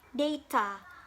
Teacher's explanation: the second syllable is weak